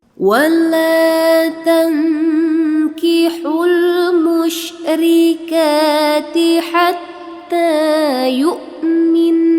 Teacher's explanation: jadi gunnah ya di ujung kalimatnya karena ada nun bertasydid ya.